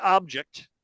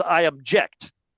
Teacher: And then if you take the verb form with the same phones, what you get is I object. You know, roughly the phones are the same, but the stress is shifted from initial to final